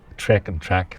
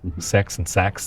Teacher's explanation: the lowered vowel actually merges to some extent with the trap vowel